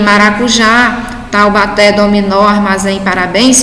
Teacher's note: Percebam que a sílaba tônica é a última sílaba de cada palavra, portanto, todas são oxítonas.